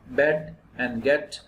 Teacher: the position of this sound is half open it is a front wall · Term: front vowel